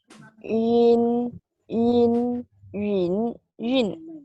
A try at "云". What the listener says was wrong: I think you need to separate the first tone and the second tone. The second one is yun. Yun.